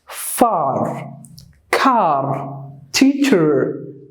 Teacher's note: In the American English, they exaggerate the R.